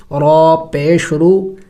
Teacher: را موٹے حروف میں سے ہے، موٹا کر کے پڑھیں گے